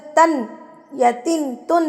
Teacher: तो जब आप नून पढ़ते हैं या तनवीन का तन या तिन तन पढ़ते हैं तो आपकी जो जुबान का कोना है ना वो ऊपर जाके लगता है दांतों के पीछे ऊपर वाले हिस्से में जाके लगता है